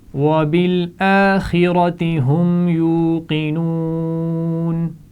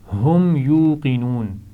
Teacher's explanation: خا اور را دونوں کو موٹا پڑھا جائے گا اسی لیے انہیں سبز رنگ میں لکھا گیا ہے. ہم یوقنون میم ساکن ہے اور پھر میم کے بعد میم بھی نہیں ہے اور با بھی نہیں ہے اس لیے یہاں پر غنہ نہیں کیا جائے گا